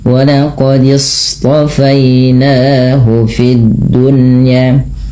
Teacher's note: Nah, shad hati-hati jangan dibaca walaqis. Jangan dengan huruf sin.